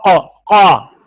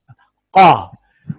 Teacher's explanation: کے مخرج کے قریب کوے کے متصل تالو کا نرم حصہ، کوے کے متصل تالو کا نرم حصہ، اس سے قاف نکلتا ہے